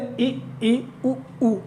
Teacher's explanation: देखिए मुंह बिल्कुल बंद ही दिखाई देगा